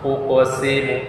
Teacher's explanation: harus diperjelas bunyi pantulan atau Qalqalah pada salah satu huruf Qalqalah tersebut